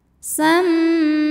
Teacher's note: Cara bacanya didengungkan. Bunyi dengungannya M, tahan sampai ada suara masuk hidung kurang lebih 2 harokat. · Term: gunnah musyaddadah